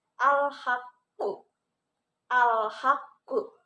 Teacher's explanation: qafnya itu dibaca double, hanya saja ditahan dulu di awal, baru ke qalqalahnya.